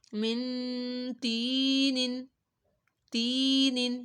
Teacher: میم نون زیر من، تو یا زیر تی، من تی، نون دو زیر نن، من تینن، تینن. یا ساکن سے پہلے زیر آ رہی ہے تو تی حروف مدہ ہو گیا اور نون کے اوپر غنہ کیا